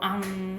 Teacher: 우리가 코를 막고 앙 하면은 울리거든요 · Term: 콧소리